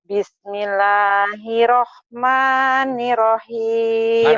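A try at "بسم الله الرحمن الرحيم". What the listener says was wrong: ada tasdidnya. Bismillahirrahmanirrahim. Ayo lagi tasdidnya. Bukan hirahman, kan ada tasdidnya. Bismillahirrahmanirrahim.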